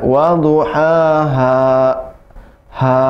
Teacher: dunya tebal, ha-nya ha kecil, bukan ha besar